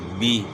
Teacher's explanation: با یا زیر بی ہم اگر پڑھتے ہیں تو اس یا کی آواز کو ہم آدھا کر لیتے ہیں، بی۔ با یا زیر بی ہے تو اس کو آدھا کریں گے تو آواز ہو جائے گی بی۔